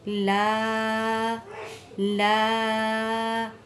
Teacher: لا پہلے بھی آپ کو بتایا گیا تھا کہ جب بھی یہ چھوٹی مد آ جائے اور دوسرے کلمے کے شروع میں الف والا حمزہ آ جائے، یہ اسے حمزہ کہیں گے، تو وہاں پر مد منفصل ہوگا جس کی مقدار 4 الف ہیں، جس کو کھینچ کے پڑھیں گے